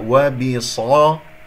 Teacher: ميم مظهرة خاصة جاء بعدها واو، لهم وبصدهم، ميم مظهرة، صاد مفخمة مرتبة ثانية لأنها مفتوحة، وبصدهم، ولا تقول وبصدهم، لا تفخم الدال، الصاد فقط هي المفخمة